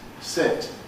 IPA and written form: sɪt (sit)